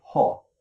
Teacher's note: For example, you learned that the experience of hearing other people say ho can be linked to actions which produce a short back vowel with slightly rounded lips and a breathy onset